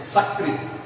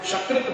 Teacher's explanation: अब यदि हम कोई शब्द का उच्चारण मानकर चलते हैं कि एक शब्द लेते हैं सकृत, दंत स से सकृत बोलते हैं, और तालव्य श से यदि हम शकृत बोलते हैं, शकृत सकृत यदि उच्चारण करते हैं तो अर्थ देखिए, अर्थ की भिन्नता कैसे होती है।